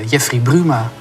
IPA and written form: ˈdʒɛfri ˈbrymaː (Jeffrey Bruma)